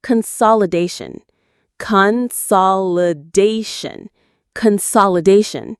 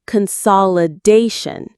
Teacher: The main stress is on da